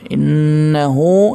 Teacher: Innahu ya, hu ya itu dibaca panjang 2 harakat. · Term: matsilah qasira